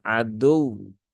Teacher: Nah, maka tunaikan tasdidnya dan huruf waw yang bertasdid karena hurufnya ya, bukan karena sebab sebab hukum tajwidnya, maka dia dibaca dengan an-nabr ya, ada penekanan, sedikit penekanan pada huruf wawnya